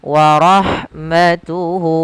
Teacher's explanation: Atau kalau di sini waw kecil. Maka kita panjangkan hu-nya 2 harokat. · Kemudian pada lafal warahmatuhu, lafal ha ketika dia sukun, maka huruf ha-nya itu dialirkan nafasnya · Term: mad silah qasira, mad silah qasirah